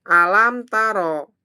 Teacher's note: Alam taro. Di sini ada mim sukun bertemu ta idhar syafawi. Jadi harus jelas teman-teman ya.